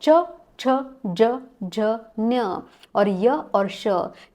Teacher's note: उसके बाद नेक्स्ट आते हैं तालव्य वर्णाहः। तालव्य यानी जिसको प्रोनाउंस करते वक्त हमारी जीभ तालु को स्पर्श करती है